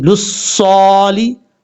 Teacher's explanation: लाम स्वाद पेश, लुस स्वाद खड़ा दबर सौ, लुस्सौ लाम ज़ेर ली, लुस्सौली। स्वाद हुरूफ मुस्ताला में से है, पुर पढ़ा जाएगा।